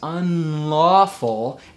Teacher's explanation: N, and then make that N into an L. N, N, N, and then we have that nice unlawful, and I have that buzz in my sound, that nasal resonance. So it's the jaw and the nasal resonance. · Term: front L